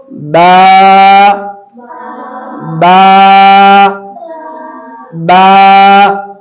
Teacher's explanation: नहीं, खुश्की वाला हिस्सा नहीं, तरी वाला हिस्सा, बिल्कुल नॉर्मल जैसा हमारा होठ रहता है बात करते हुए, तो तरी वाले से बा। बा हम थोड़ा इसको इसलिए खींच रहे हैं क्योंकि इसके अंदर अलिफ मौजूद है, इस वजह से इसको खींच के पढ़ रहे हैं।